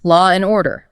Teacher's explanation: law and order often sounds like lore and order. The words just melt together. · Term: intricate linking